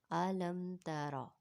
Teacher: میم ساکن کے بعد نہ تو با آیا ہے اور نہ ہی میم آیا ہے، تو اس لیے ہم غنہ نہیں کریں گے بلکہ سمپل ہی پڑھیں گے۔ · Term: اظہار شفوی